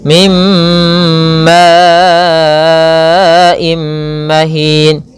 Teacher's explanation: idgham bi gunah, yaitu nun sukunnya kita masukkan kepada huruf mim.